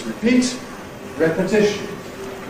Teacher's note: you’ve got to have a secondary stress on the first syllable. Therefore, it gets the vowel /e/ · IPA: /ˌrepəˈtɪʃn/